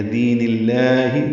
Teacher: را کو پر پڑھیں گے، افا غیر دین اللہ، دی یا مدہ ہے، نون کی زیر کو لام اسم جلالہ سے ملائیں گے، لام اسم جلالہ کو باریک پڑھیں گے کیونکہ نون کے نیچے زیر آئی ہے۔ دین اللہ، دو حرکات لمبا کریں گے۔